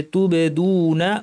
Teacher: বায়ের উপর সুকুন আছে, কলকলা করতে হবে।